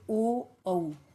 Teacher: ओ और औ को बोलेंगे तो कंठ और ओष्ठ दोनों से ध्वनि उत्पन्न होगी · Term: कंठोष्ण